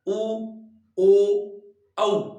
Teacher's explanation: उच्चारण करने पर होठों का आकार लगभग गोल सा हो जाता है, वो वृत्ताकार या वृत्तमुखी है वो माने जाते हैं।